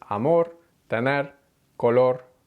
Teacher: r and the consonant are part of the same syllable and we have the tapped r at the end of words